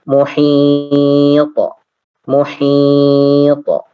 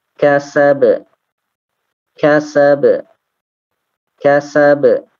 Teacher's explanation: Posisinya kalau misalkan dia waqaf maka dia qalqalahnya kubro. Misalkan lagi muhit.